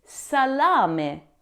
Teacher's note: the a in the first syllable is a clear open a sound · Sa, not s. And the final E is never silent, as we saw earlier with grazie. It's a crisp meh sound.